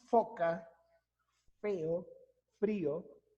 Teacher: Cuando decimos foca, feo, frío, de inmediato vemos la aplicación de nuestros dientes superiores sobre el labio inferior · Implica el uso del labio inferior y los incisivos superiores, los dientes superiores, para la pronunciación del fono F. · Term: labiodental